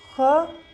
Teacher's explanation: कंठ और जिह्वा मूल का रहेगा, अघोष और महाप्राण हो जाएगा